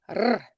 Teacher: the R in Scottish, it's going to be strongly rolled or maybe tapped on, and it's pronounced when it's the at the end of words. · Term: rolled R